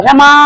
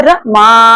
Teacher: अब हम उसे रमा नहीं कहेंगे। रमा यहां पे हम मा को तीन गुना खींच रहे हैं। क्यों? क्योंकि इसके बाद यह सिंबल जो बन गया है ना वो प्लुर स्वर का है। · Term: प्लुत स्वर